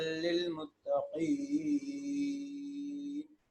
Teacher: یہ قاف متقین کا اس کو موٹا کر کے پڑھتے ہیں